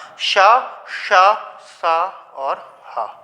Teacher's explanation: इनके उच्चारण में मुख से गर्म वायु निकलती है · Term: ऊष्म व्यंजन